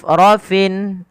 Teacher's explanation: pada lafal rafrafin huruf fa tidak boleh bibir kita merapat sehingga nanti terdengar dengan bunyi huruf P · Hamus adalah mengalirnya nafas mengalir. Ya, ketika melafalkan fa harus alir. Rafin. Nah, kemudian pada lafal fin bertemu dengan bertemu dengan kha. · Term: sifat hamusnya